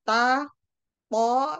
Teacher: jadi dia kerja sama antara gigi dengan gusi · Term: alveodental